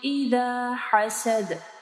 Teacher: دال کے اوپر قلقلہ کرنا ہے، ہا کو واضح پڑھنا ہے